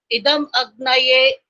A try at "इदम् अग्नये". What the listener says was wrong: फिर आपने भी वही गलती करी है जो स्वराज गुप्ता जी कर रहे थे, इदम अग्नय बोला, यहाँ इदम अग्नय नहीं बोल सकते यहाँ पर।